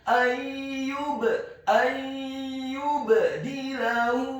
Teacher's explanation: Ayyubadilahu, huruf ya-nya dibaca tipis, dhammah 1 harokat. Huruf ba-nya dibaca sukun tipis dan wajib untuk diqalqalakan atau dipantulkan.